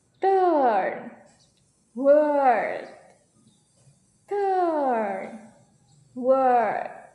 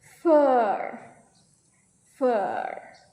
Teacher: To make the sounds the lips are only slightly rounded and relax. Your tongue should be flat and central in your mouth. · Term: long vowel sound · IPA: /ɜː/